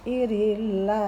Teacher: karena huruf Allah didahului dengan kasroh dibaca tipis